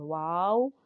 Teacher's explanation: واو دونوں ہونٹوں کی گولائی سے ادا ہوتا ہے